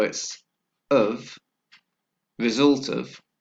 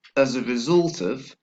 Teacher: we have a link between the end of the penultimate word and the last word and with a weak sound